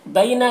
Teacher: یہاں پر یالین ہے، اسے نرم آواز کے ساتھ جلد پڑھیں گے۔